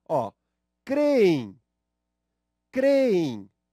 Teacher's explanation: vejo que a sílaba tônica é o cre, de creem